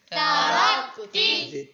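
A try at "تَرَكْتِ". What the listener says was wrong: تا باریک بنا، ترکتی،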